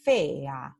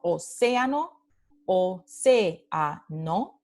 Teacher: Entonces, la palabra silabificada es fea, ¿sí? Y estas dos vocales no forman un diptongo, forman un hiato, porque están en sílabas diferentes